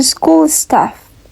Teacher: And the third rule is sense of aspiration. There is no aspiration when these sounds are preceded by s.